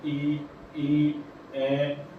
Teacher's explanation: जिन स्वरों के उच्चारण में जीवा के आगे का हिस्सा उठता है उन्हें अग्रस्वर कहते हैं।